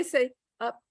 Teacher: if i say up there's no p i'm not opening